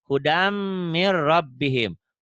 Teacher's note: N-nya melebur ke ro, ke R.